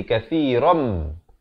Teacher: Ram dengan dua harakat di sini idgham bi gunnah. Asalnya kathiran, tapi datang mim jadi masuk beserta dengung jadi kathiram. Tapi dengungkan dua harakat.